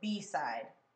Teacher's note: It should be the second syllable that is stressed.